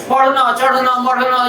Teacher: आपकी जीभ इस माउथ कैविटी में, मुख गुहा के अंदर झटके से ऊपर जाएगी और झटके से नीचे आएगी। जैसे मेढक तालाब के नजदीक हो, आप उसको छेड़ दें तो ऊपर कूदता है और जब से नीचे आता, बिल्कुल वही आवाज आपको आ जाए तो समझ लीजिए ये ड़ा और ढा है, पक्के हो गए हैं।